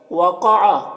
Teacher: قاف یہ حروف مستعلیہ میں سے ہے تو اسے پر پڑھیں گے۔ علیہم یہاں پر یا ساکن سے پہلے لام کے اوپر زبر ہے تو یا لین ہوگا، اسے نرم آواز کے ساتھ جلد پڑھتے ہیں۔